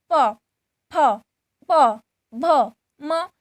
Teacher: ये सब ओठों से उच्चारित होते हैं